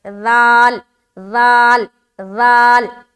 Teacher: آگے وَمِن، واو زبر وا، میم نون زیر من، یہاں پر دیکھیں نون ساکین ہے نا نون ساکین، اور نون ساکین کے بعد کون سا حرف ہے؟ حرف ذال ہے، جو کہ بہت نرمی سے اور بغیر سیٹی دار ادا ہوتا ہے